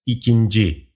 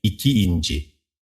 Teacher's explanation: But if the number already ends with a vowel, the initial vowel of the suffix is dropped because two vowels cannot be next to each other in Turkish. Therefore, only nci, nci, ncu, ncu is added.